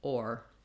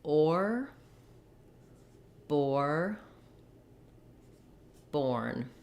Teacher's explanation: When I say or, I'm gliding into that tight or position. So I'm starting with my mouth a little more open, a little bit of rounding, and then I move into that So my tongue moves a little forward and up, or. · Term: or sound